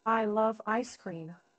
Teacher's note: love and cream are stressed while I and Ice are unstressed